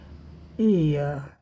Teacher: front of tongue up आप देख रहे हैं इ जब कर रहे हैं इ की ध्वनि तो यह पार्ट ऊपर है